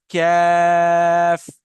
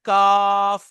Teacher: इसको काफ नहीं कहना, आवाज मोटी नहीं होनी चाहिए, बारीक है ये